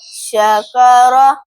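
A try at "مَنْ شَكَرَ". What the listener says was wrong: रा पुर पढ़ेंगे, भाई काफ नहीं, रा पुर पढ़ेंगे। हाँ, शकार, मन शकार, मन शकार, काफ बारीक है। शकर, शक, मन शकर। हाँ, नून साकिन के बाद हुरूफ़ इख्फ़ा में से शीन आ गया है।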